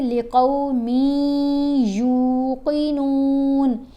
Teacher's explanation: لقومی, میم کو جب یا سے ملانا ہے تو ایک حرکت کے برابر ٹھہرا جائے گا, یہاں پر نون کی آواز ختم ہو جائے گی, لقومن نہیں پڑھا جائے گا, میم نون کی آواز ختم ہو گئی, سائلنٹ ہو گیا. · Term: غنہ